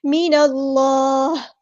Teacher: نون کو ہم لام کے ساتھ ملا دیں گے. حمزہ الوصل ہمارا ڈراپ ہو جائے گا. اللہ کا جو لام ہے پور پڑا جائے گا.